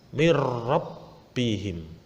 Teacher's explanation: Cara membacanya harus dimasukkan tanpa mendengung. Jadi langsung masuk. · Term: idgham bila gunnah